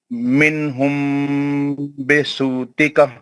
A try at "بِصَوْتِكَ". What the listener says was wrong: بصوتک لین کرو، صوتک نہیں سو،